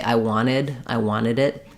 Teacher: or wanted um now I've written wanted here as wanted because when there's an NT in the middle of a word often times you'll hear native speakers drop that t